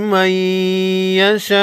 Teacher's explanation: نون ساکن کے بعد حروف یرملون میں سے یا ہے، ادغام مع عنہ ہوگا یعنی غنہ کے ساتھ ادغام ہوگا، بڑی مد کو 5 الف کے مقدار یعنی 5 سیکنڈ لمبا کریں گے۔